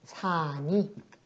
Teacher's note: 살다 할 때 그 용언의 어간에 해당하는 살, 용언의 어간 받침 리을이 그 뒤에 오는 니은을 만났을 때 리을 탈락이 이루어진다